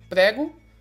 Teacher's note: a sílaba tônica está então no pré